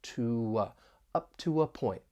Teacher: So to ends with a back vowel, so we can add a slight w, that W sound in between there to link them together. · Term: intrusion